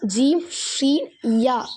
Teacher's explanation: நாவின் நடுப்பகுதி மேல் முரசை தொடும் பொழுது பிறக்கிறது. இதை நம்ம சொல்லி பார்த்தோம் அப்படின்னா ஜீம் ஷீன் யா சொல்லி பார்த்தோம் அப்படின்னா நாவின் நடுப்பகுதி மேல் முரசை தொடுறது நமக்கு நல்லாவே தெரியும்.